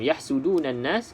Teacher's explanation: Yahsudunan nas, kita jumpa lagi alif lam syamsiyah. Okey, abaikan saja huruf lam ni, terus masuk dalam huruf nun, didengungkan 2 harakat.